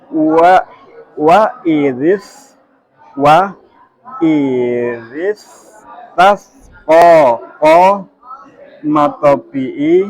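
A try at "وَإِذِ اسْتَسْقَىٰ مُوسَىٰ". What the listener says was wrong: Nah, berapa harokat? Nah, tadi bacanya kepanjangan. Nah, harusnya seperti itu.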